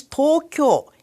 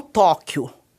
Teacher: não há acento tônico como no português. A diferença, quando tem, é feita pela modulação da voz em ascendente, descendente ou plana.